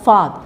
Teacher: the first syllable is more prominent than the second syllable. So you have father, all right?